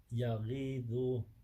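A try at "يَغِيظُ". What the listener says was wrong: Ain. It's not a mad there. Ya'i. Ya'idu.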